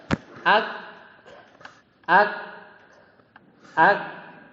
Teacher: Nah ada hamsnya, ada aliran udara yang keluar. Ini semua pasti ada udara yang lewat.